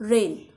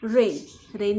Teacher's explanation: ए आय या स्वराचा ए असे उच्चार होणार शब्द पाहूयात रेन इथे ए आय चा ए असा उच्चार होतो